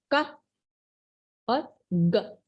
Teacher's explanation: तो उनका ये कहना है, यहाँ पे कह रहे हैं कि जो का और ग साउंड है, खासतौर पर अगर आप ग साउंड बोलने की कोशिश करेंगे तो बकायदा आपको फील होगा कि जो आपका टंग है, उसका बैक पार्ट जो है वो आपके सॉफ्ट पैलर को टच करता है जब आप ये साउंड प्रोड्यूस करते हैं।